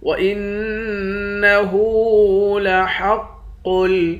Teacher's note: قاف کو لام کے ساتھ ملا کر پڑھیں گے اور قاف کو موٹا بھی پڑھیں گے۔